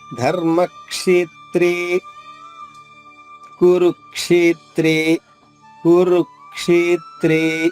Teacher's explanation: తా ద్విత్వం చేసుకుంటూ, ద్విత్వం అంటే 2 తాలు అవుతుంది